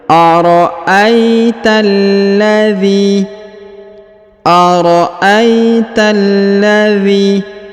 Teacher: huruf ta langsung sambung masuk ke huruf lam yang berharokat sukun, ya. Alif lam qamariyah, ya.